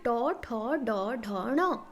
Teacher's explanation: मुर्धन्य मतलब दंत से थोड़ा सा पीछे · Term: मुर्धन्य वर्ग